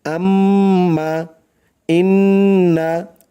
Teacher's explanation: নাকের বাঁশি হইতে গুন্নাহ পড়া হয়